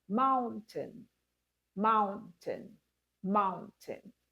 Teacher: You stress the first syllable and you don't pay a lot of attention to the second syllable.